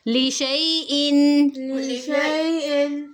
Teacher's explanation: اب دیکھیں لیشا، اگر ہم پڑھیں لیشا یا نہیں پڑھا جائے گا، مطلب ایسی سینس ہی نہیں بن رہی، اس لیے لی شئی، شین کو یا سے ملائیں گے اور حمزہ کے نیچے دو زیر ہیں ان کو پڑھیں گے، لیکن یہ جو درمیان میں الف ہے یہ حذف ہو جائے گا، جیسے آپ کو یہاں نظر آ رہا ہے، یہ وہ نہیں پڑھا جائے گا، لشیئن پڑھا جائے گا۔